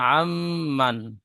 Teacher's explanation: মিমের উপরে তাজদিদ এসেছে, মিম তাজদিদ গুণনা করা ওয়াজিব, এক আলিফ পরিমাণ গুণনা করে পড়বো · ইজরা আইনের উপরে যাবার এসেছে, যাবারটি হারাকাত, হারাকাত তাড়াতাড়ি পড়তে হয়, টান দেওয়া নিষেধ। নুন সাকিনের পরে ইউমিনের 4টি অক্ষরের মধ্যে মিম এসেছে, তাই নুন সাকিনকে এক আলিফ পরিমাণ গুণনা করে পড়তে হয়, একে ইদগামে নাকিস বলে।